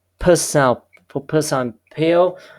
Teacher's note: you use your both lips to close the airflow completely, and then you open your lips to release the airflow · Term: stop or plosive sound